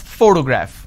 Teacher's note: this particular word has three syllables and i pronounce this as photograph which means i'm stressing on the first syllable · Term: word stress